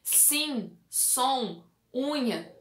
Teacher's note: é é um sim som unha são todos exemplos de vogais que são nasalizadas ou seja o som sai muito mais pelo nariz